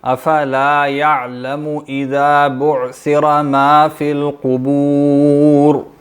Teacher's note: پیش ہے نا، اس کو لمبا نہیں کریں، یعلمو نہیں پڑھیں گے